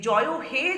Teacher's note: জয় হে যখন উচ্চারণ করা হয়, শেষের এ স্বরধ্বনিটি প্রলম্বিত আকারে উচ্চারিত হয়। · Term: প্লুতস্বর